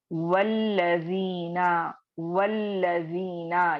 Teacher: अब अगली आयत में ऐसे ही आप देखें वल्लजीना, वल्लजीना, यहाँ पे भी चूंकि आयत वाउ से स्टार्ट हो रही है तो मैं क्या की, हमजतुल वस्ल के अलिफ को ड्रॉप कर दी, ठीक है, ड्रॉप कर दी और मैं डायरेक्टली वाउ को लाम से मिलाते हुए पढ़कर आगे चली गई